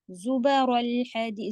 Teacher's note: زبا با نہیں کہیں گے، با سیدھا رکھنا ہے